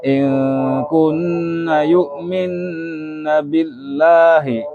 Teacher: In kunna yu'minna billahi, jadi nggak ikut-ikutan panjang. Yang kunna 1 alif, minna 1 alif, billahi ya setengah alif. Itu, maksudnya satu harokat.